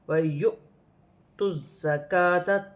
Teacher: حمزہ پر جزم کی حرکت ہے، تو یہاں حمزہ کو جھٹکے کے ساتھ پڑھا جائے گا، جیسے وَيُؤْتُ الزَّكَاةَ، تا کو زا کے ساتھ ملا کر پڑھا جائے گا، زا مشدد ہے، جماؤ اور سختی کے ساتھ پڑھا جائے گا۔ کاف باریک والی ہے اور کھڑی زبر ہے، کھینچ کے پڑھا جائے گا 1 الف کی مقدار، اور ذال نرمی والا حرف ہے، اس پہ کھڑی زبر ہے، اسے بھی 1 الف کی مقدار کھینچ کے پڑھا جائے گا۔